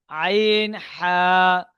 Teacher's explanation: হালাকের বা কণ্ঠনালীর মাঝখান হতে উচ্চারিত হয়।